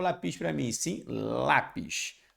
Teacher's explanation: então a sílaba tônica é o lá